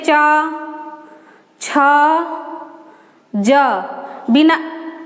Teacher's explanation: च को बोलने के लिए हमारी जो जबान है तालु में सटती है